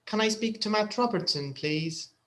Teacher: there's an upwards intonation. So it's like the question, because it's a question, it will go up.